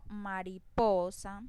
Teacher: la mayor intensidad o la mayor fuerza en la voz la hago en la sílaba po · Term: acento